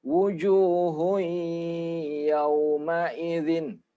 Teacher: dengan Iya maka diidghamkan juga dimasukkan wujuhuy buy dengung wujuhuy yawma-idzin jadi didengungkan atau agak lama dua harokat · tanwin ketemu dengan Iya maka diidghamkan juga dimasukkan wujuhuy buy dengung wujuhuy yawma-idzin jadi didengungkan atau agak lama dua